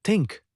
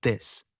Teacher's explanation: Three, dental or interdental produced with a tongue tip touching or protruding between the teeth. Examples, sound th is voiceless as in think, but is voiced as in this